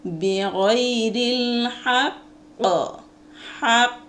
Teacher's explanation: জিহ্বার গোড়া তার বরাবর উপরে তালুর সঙ্গে লাগাইয়া, জিহ্বার গোড়াটাকে বরাবর উপরে তালুর সঙ্গে মিলাইয়া এবং সাথে সাথে পৃথক করতে হবে। ওখানে একটা পাল্টা আওয়াজ বা লাড়াচাড়া করতে হবে। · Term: কফের মাখরাজ